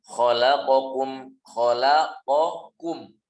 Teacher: Qaf lebih dalam daripada huruf kaf.